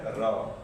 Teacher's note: जिन व्यंजन वर्णों का उच्चारण करते समय जीभ मुख के मध्य तेजी से लड़खड़ाए या कंपन करे, उसे बोलते हैं हम लुंठित या प्रकंपित व्यंजन